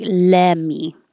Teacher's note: And it sounds like lemme. So we drop the T completely.